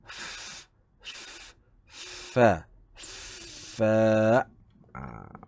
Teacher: Tetapi dia menggunakan melibatkan dua anggota untuk menghasilkan huruf fa, iaitu hujung gigi kapak menyentuh di belakang bibir sebelah bawah.